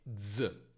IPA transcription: dz